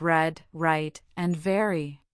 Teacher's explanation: The most common pronunciation is the alveolar approximant, where the tongue tip curls back slightly towards the alveolar ridge without actually touching it, creating a resonant, voiced sound.